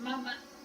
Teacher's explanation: m es el sonido consonante lo más fácil en todas las lenguas porque es labial, no participa ni lengua, ni paladar, ni nada más, entonces es lo más fácil para pronunciar.